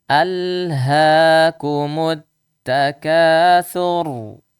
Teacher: Ra-nya dibaca tebal. Kenapa? Karena sebelumnya domah. Sa domah. Sur.